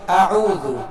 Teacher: اعوذ پہلے حمزہ ہے، حمزہ کو سختی کے ساتھ ادا کریں گے اور حمزہ عین میں فرق کریں گے، حمزے کا مخرج الگ